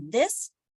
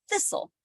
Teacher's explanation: in this the th is voiced so if you put your hand on your throat and you say this and then thistle you'll feel that your vocal cords are only working with this